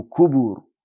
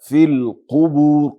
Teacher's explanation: قاف لډک حروف نه ده، فی القبور کې قاف ډک تلفظ سي. دویم دا چې قاف په کاف باندې بدل نسی